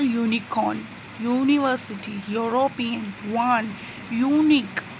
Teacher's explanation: when we pronounce them, the sound comes as Y first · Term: consonant sound